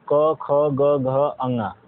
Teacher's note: क वर्ग का जो उच्चारण स्थान होता है वह कंठ होता है